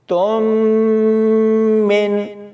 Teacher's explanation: اب ہم میم کی مثال تنوین کے ساتھ بھی دیکھتے ہیں، فَعِدَّةٌ مِّن، تم من، یعنی میم سے پہلے تا اور اس کے اوپر تنوین ہے تو یہاں پر غنہ کر کے پڑھا جائے گا